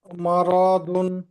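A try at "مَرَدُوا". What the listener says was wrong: আচ্ছা, মা র বলে টান দিয়েছেন, কিন্তু রতে টান হবে না, হাই স্পিড বলতে হবে, মা রদুন।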